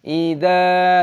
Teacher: Duna, dal dibaca panjang dengan wawu sukun, diperpanjang dua ketukan (mad thabi'i) . Idza, dal dibaca panjang dengan tanda alif, mad thabi'i, panjangkan dua ketukan.